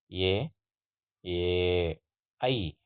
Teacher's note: ಕಂಠ ಮತ್ತು ತಾಲು ಅಂದ್ರೆ ಕಿರುನಾಲಿಗೆಗಳ ನೆರವಿನಿಂದ ಹುಟ್ಟತಕ್ಕಂತ ವರ್ಣಗಳನ್ನು ನಾವು ಕಂಠ ತಾಲವ್ಯ ಧ್ವನಿಗಳು ಅಂತ ಕರೀತೀವಿ